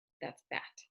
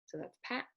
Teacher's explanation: Pat and bat are exactly the same, except the beginning is voiced or voiceless, right? So the voiceless is p, so that's pat, and the voiced is b, that's bat.